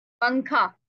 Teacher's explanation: नून की आवाज को छुपाना है, हमने जाहिर नहीं करना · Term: इख्फा